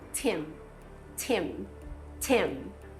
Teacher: Primeiro, o ch de tia, que a gente fala em tim, mas no inglês é Tim. E o M final, que a gente produz fechando a boca.